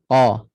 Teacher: Kalau huruf qaf, langit lembut dekat-dekat anak tekak. Jangan letak dekat-dekat dengan kaf.